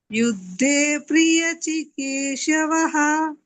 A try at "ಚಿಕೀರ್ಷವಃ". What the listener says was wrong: ಚಿಕೀರ್ಷವಃ ಚಿಕೀರ್ ಅಂತ ಬರ್ಬೇಕು. ಅರ್ಕವತ್ತು ಅಷ್ಟೇ ಹೇಳ್ಬೇಕು.